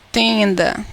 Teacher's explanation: Essas duas letras estão emitindo apenas um som, que é o som nasal do E.